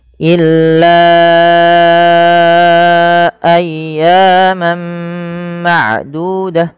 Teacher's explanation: kita harus memanjangkan sepanjang empat atau lima harakat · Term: mad jaiz munfasil